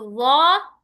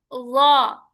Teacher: زبان کی نوک سامنے والے دانتوں سے ٹکرائے تو وا، نیچے کا ہونٹ گول، وا